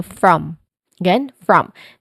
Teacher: it is unstressed. It is quick and relaxed vowel sound. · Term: schwa sound